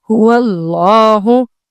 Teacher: اگر لفظ اللہ سے پہلے والے حرف پر زبر یا پیش ہو تو لفظ اللہ کا لام موٹا یعنی ہیوی پڑھا جائے گا